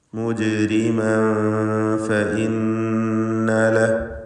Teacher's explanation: മുജ്രിമൻ, ഈ പദത്തിൽ ജീമിൻ്റെ സുക്കൂൻ ഖൽഖല സുഗ്റ നൽകി ശബ്ദം ഹറക്കത്ത് പോലെ ചലിപ്പിക്കുക · മുജ്രിമൻ ഫഇന്ന ലഹു, മുജ്രിമൻ എന്നതിലെ തൻവീൻ ശേഷം ഫ എന്നതുകൊണ്ട് ഇഖ്ഫാ ഹഖീഖി നൽകി മറച്ചു മണിക്കുക, അവ്യക്തമാക്കി മണിച്ചുച്ചരിക്കണം.